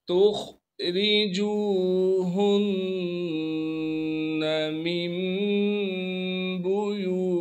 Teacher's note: रा को बारीक पढ़ेंगे